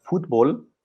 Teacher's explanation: this word ends in a consonant which is not n or s but the stress is on the second to last syllable